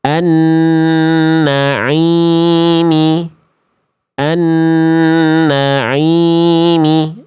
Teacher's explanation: suara masuk ke dalam rongga hidung sehingga menghasilkan suara yang sengau atau kalau bahasa sundanya ngirung atau bindeng ya.